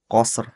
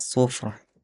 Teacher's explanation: huruf rnya tetap walaupun mati tapi tetap keluar tetap keluar dari lisan